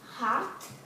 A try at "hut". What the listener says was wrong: Hut, not hot. Hut.